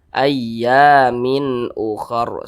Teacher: Perhatikan di samping huruf hamzah termasuk kepada huruf izhar halqi. Maka hukumnya izhar halqi dibaca jelas tidak berdengung, jangan dipanjangkan, pendek saja.